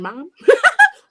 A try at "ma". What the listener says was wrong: Mom. No, we don't say mom. We say ma. M-A. We just say M-A. We don't got nothing else on it. Just M-A.